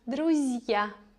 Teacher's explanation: We see here soft sign, again letter, ya. We have also consonant z, which normally should sound like z, but we make it very soft.